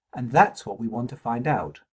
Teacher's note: That's has a pre-nuclear, high pitch level (i.e. level 4) · the three ... words what, want and find all have some rhythmic stress prominence in the lead up to the word out